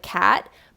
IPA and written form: kæt (cat)